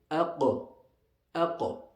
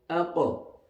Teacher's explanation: And the major difference between a qaf and a kaf is that the kaf is pronounced with an open mouth, where the tongue will not raise towards the palate, but the qaf, the back extreme of the tongue will go up towards the palate.